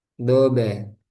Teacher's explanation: Baknya sukun mantul. Di sini qalqalah sughra karena ada di tengah. Do be. Kemudian karena ba hurufnya tipis, maka do be.